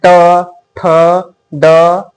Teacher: हमारा जीभ क्या होता है जीभ मुर जाता है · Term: ट वर्ग